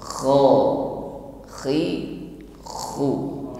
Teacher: Jadi keluar dari adnal halqi, tenggorokan paling atas, dan ada gesekan antara akar lidah dengan dinding tenggorokan, maka ada bunyi gesekan seperti ngorok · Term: huruf kha